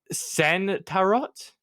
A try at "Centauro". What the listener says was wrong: the final T is silent. Centauro.